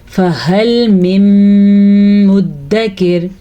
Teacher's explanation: ادغام ہوتا ہے کہ دونوں کو ملا دیا جائے گا، اور بالغنہ کیا کہ وہاں پہ ہم غنہ بھی کریں گے۔ اس قاعدے کو اسی لیے ادغام بالغنہ کہا جاتا ہے۔